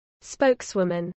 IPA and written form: ˈspəʊksˌwʊmən (spokeswoman)